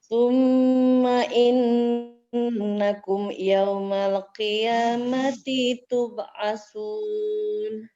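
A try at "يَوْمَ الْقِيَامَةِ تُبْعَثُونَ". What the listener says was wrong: Hati-hati, lamnya bukan huruf qalqalah, maka tidak boleh dipantulkan. Yaumal qi. Coba dibunyikan yaumal qi.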